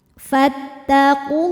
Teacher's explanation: Alif lamnya dinamakan dengan alif lam syamsiyah karena alif lam menghadapi huruf syamsiyah yaitu lam. Maka alif lam tidak kita baca.